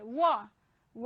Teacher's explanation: तो वकारस्य दंतोष्ठम, वकार, व जो होता है व का उच्चारण दंत और ओष्ठ से होता है